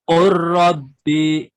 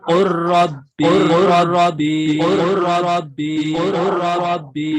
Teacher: langsung lamnya hilang. Artinya melebur kepada ra. Namanya idgham ya.